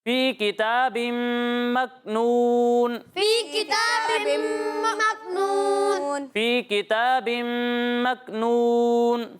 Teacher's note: یہاں غنہ ایک الف کی مقدار تک کرنا ہے، ٹھیک ہے؟ تو تھوڑا ٹھہریں ایک الف تک۔